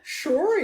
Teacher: apesar de começar com o s ela é pronunciada com som de X